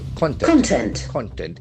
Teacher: Content. Whereas for noun meaning, the accent falls on the first syllable.